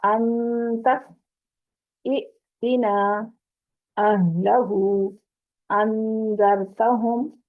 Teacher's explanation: پہلا حمزہ متحرک ہے اور دوسرا ساکن ہے، دوسرے حمزہ پر جھٹکا لگے گا